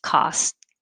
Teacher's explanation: I don't really say that t at all just costco